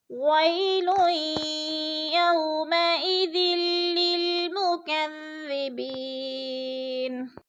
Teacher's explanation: اور مکذبی بی پہ یا مدہ ہے، یا مدہ کو ہم نے 1 الف 2 حرکات کے برابر لمبا کر کے پڑھنا ہے